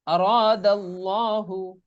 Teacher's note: আল্লাহ শব্দের লামের ডানে যদি জবর কিংবা পেশ থাকে তবে উক্ত লামকে সবসময় মোটা করে পড়তে হয়।